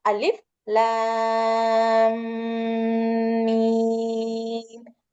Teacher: இருக்கு சோ இது வந்து அலிஃப் மத் மதுக்கு ரெண்டு ஹரக்கத் கொடுக்கணும் இந்த மத்தை தொடர்ந்து சுகூன் பெற்ற எழுத்து வந்திருக்கிறதுனால இதை வந்து ஆறு ஹரக்கத் நீட்டுவோம்